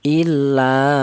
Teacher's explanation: panjangnya yaitu satu alif atau dua harakat atau dua ketukan